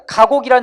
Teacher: 앞에 기역은 K, 무성음이고요. 중간에 기역은 G, 유성음입니다. 마지막에 기역은 다듬소리, 즉 K하고 막힘입니다, 여러분.